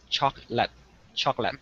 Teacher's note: the second o in chocolate is not pronounced so we do not say chocolat it's choc choc lit chocolate